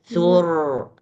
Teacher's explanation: R-nya yang dipanjangin satu harokat, bukan su-nya. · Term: Tawasud ro